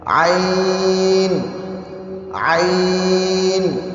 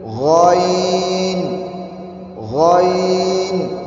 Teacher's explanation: یہ جو عین ہے یہ باریک ہے اور غین موٹا ہے